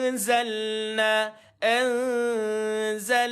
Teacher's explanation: Za ini adalah huruf istifal tuan-tuan tuan-tuan tak payah baca dengan tebal